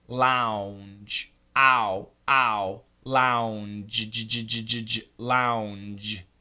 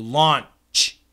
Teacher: The j is vibrated, the ch is not.